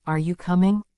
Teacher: our voice Rises at the end to show it's a question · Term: intonation